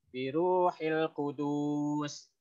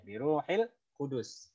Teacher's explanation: Di sini nggak ada mat. Jadi biruhil kudus. Satu harokat aja.